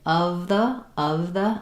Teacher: So as I say of the of the I have to sneak my tongue forward quickly for the th sound. Also notice in my the I'm using a schwa there as well. · Also notice in my the that I'm using a schwa there as well.